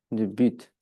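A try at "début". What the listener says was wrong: Oui, comme tu veux.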